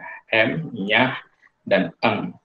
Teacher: aliran udara betul-betul tertutup melalui rongga mulut, aliran udaranya dialirkan melalui rongga hidung, sehingga kita sebut sebagai bunyi nasal